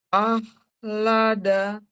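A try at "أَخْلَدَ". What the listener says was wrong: akhlada, jangan kayak H ya.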